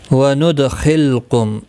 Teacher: دال ساکن پر قلقلہ ہوگا، خا حروف مستعلیہ ہے، پر پڑا جائے گا